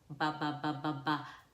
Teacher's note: Our lips are gonna come together because that's bilabials. We're putting our lips together to make M, P, B.